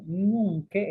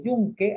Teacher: este intercambio entre la mediopalatal y la palatal nasal